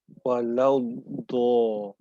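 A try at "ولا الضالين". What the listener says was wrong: Masih ada bocor sedikit. Kalau kanan, coba kanan. Oke, berarti sekarang maksimalkan yang kiri berarti ya. Berarti tinggal dimaksimalkan tekannya. Hati-hati yang bagian depan. Hati-hati dengan bagian depan.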